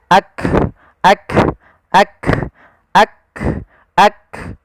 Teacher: Sehingga ketika melafalkan huruf kaf, yang perlu kita bunyikan dulu yang syiddahnya, yaitu kita tahan suaranya, baru kita alirkan nafasnya